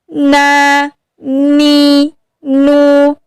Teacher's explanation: Makhraj nun di ujung lidah mengenai gusi bagian atas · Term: huruf nun